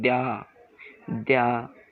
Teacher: तो द्या द्या, यानी द की ध्वनि आधी कट रही है और या की ध्वनि पूर्ण आ रही है